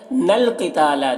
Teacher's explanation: نون کو لام سے ملا کے پڑھنا ہے